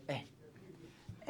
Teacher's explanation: ए बोलते हैं तो ऐसा कहते हैं कि जीभ बिल्कुल जो है बीच में से एक्टिव होती है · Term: मध्य स्वर